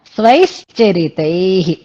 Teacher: విసర్గలు పెడితే ఉచ్చారణలో తేడా వస్తుంది హ అనక్కర్లేదు విసర్గలే హ లా అనిపిస్తాయి అన్నమాట